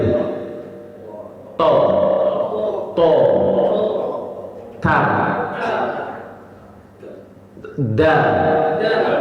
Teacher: jadi huruf to itu ujung lidah menyentuh pangkal gigi seri atas